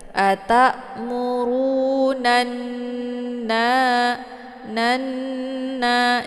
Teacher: ditekan nunnya, kemudian ditahan sambil dileburkan suara ke dalam huruf nun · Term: ghunnah musyaddadah